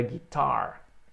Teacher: sílaba tônica é a segunda